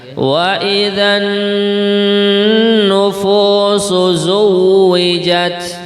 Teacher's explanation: nun yang bertasydid biar lebih indah bacaannya, mendengungnya dua harokat.